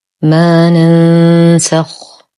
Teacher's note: ننسخ لدينا نون ساكنة وبعدها حرف السين في كلمة واحدة، الحكم إخفاء حقيقي مع غنة كاملة مرققة · ما لدينا ألف مادية ساكنة ما قبلها مفتوح فهو من الطبيعي بمقدار حركتين